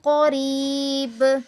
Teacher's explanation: قوف پر اس کی تفخیم ہے اور با پر قلقلہ ہے